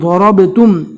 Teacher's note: ضاد کو اور رو کو پور پڑھنا ہے